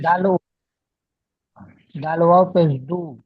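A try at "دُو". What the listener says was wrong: দু টান হবে ওয়াও মাদ্দা।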